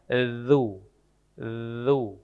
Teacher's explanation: Zu itu bukan zu z tapi ujung lidah bertemu dengan ujung gigi seri atas.